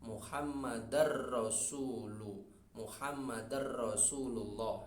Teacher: Muhammadan ketemu ro, Muhammadar terlebur masuk ke ro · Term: idgham yang tidak ada dengungnya